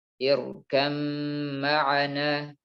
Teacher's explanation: Mutajanisain ini sama makhrajnya, tapi beda sifatnya. Ba sama mim makhrajnya sama di kedua bibir.